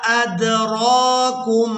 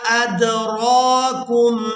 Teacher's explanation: دال ساکن پر قلقلہ کریں گے